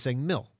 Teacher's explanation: apparently she wasn't putting the K on the end of milk. So she was saying mill.